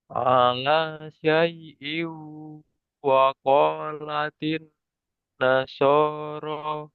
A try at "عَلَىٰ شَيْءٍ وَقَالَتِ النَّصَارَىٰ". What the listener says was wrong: Nah, shinnya menyebar ya. Sya harus jelas.